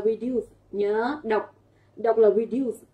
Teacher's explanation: với cái từ reduce trọng âm rơi vào âm tiết thứ hai